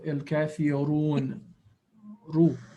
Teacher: if it's ra or ru, these are strong emphatic sounds. It means that the ra becomes with full mouth. It's pronounced with full mouth.